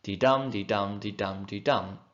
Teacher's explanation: It's still 4 pairs of something, but this time it's 4 pairs of iambs, which go unstressed, stressed. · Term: iambic tetrameter